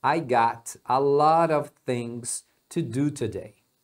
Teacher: quando eles falam o got com o a juntos, eles pronunciam gotta também